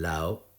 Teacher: la O, la vocal media, es un deslizamiento posterior a la fase culminante. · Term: función deslizante